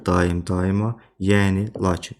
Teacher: Bu sözlərdə deməli vurğu və səs uzanması birinci hecadadır və uzanan saitlə vurğu üst-üstə düşür.